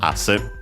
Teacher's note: Should be accented on the first syllable, and it is asse.